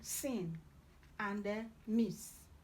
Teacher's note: Then you have s, alveolar fricative, as in sin, and miss.